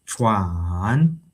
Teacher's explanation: And then there is a falling and rising tone. Chuan.